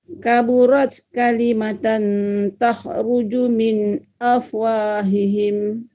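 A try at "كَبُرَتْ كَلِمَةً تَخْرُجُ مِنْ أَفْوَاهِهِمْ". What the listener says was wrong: Kha tu bunyikan kha, lepas tu Ibu jangan sampai terqalqalah pula. Tadi macam tu Ibu ya.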